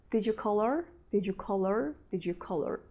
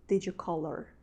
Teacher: did you color actually they say did you call her but they pronounce it very fast and it seems that there is no h sound